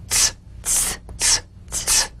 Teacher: The unvoiced tongue point plus blade consonant. Press the tongue against the upper gum ridge for the T drum beat, then crash through with a sharp, soft S.